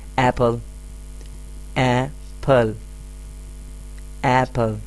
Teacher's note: سو initial sound کہاں سے آ رہا ہے؟ حلق سے آ رہا ہے، اے. کہنے کی کوشش کریں میرے ساتھ، ایپل، ایپل. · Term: واؤل ساؤنڈ